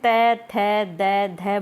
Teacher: जब हम त थ द ध बोलते हैं तो हमारी जीभ है वो दांतों को टच करती है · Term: दंत्य